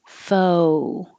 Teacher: it's important that you end the o sound with rounded lips foe because if not it'll sound like so focus and if